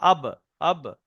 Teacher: দুই ঠোঁটের ভিজে অংশ থেকে উচ্চারণ হয়।